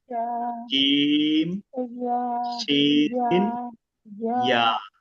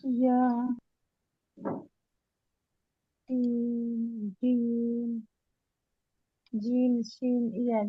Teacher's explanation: জিহ্বার মধ্যকান উপরের তালুর সঙ্গে লাগিয়ে 3 হরফ